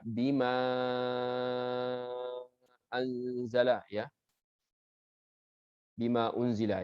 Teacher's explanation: dalam buku Syatibiyah dari riwayat Hafs an Asim dimadkan di miqdar 4 sampai 5 harakat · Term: mad jaiz munfasil